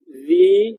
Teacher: Kepala lidah kita keluar dan juga rahang kita rendah.